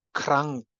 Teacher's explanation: Like in krank, where the ng is velarized, the n is pronounced as a velar sound because it is followed by a velar sound. So we have a regressive assimilation of the place of articulation.